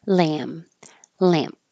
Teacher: so either way you close your lips for the M you don't release a b or a p